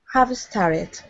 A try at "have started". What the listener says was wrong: Yeah, you still have a tiny, tiny little bit of a vowel sound before started.